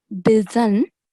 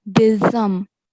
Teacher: the sound of noon will change into the sound of meme. So instead of, it won't be bizan, it will be bizam.